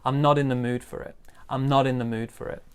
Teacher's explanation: big stress on mood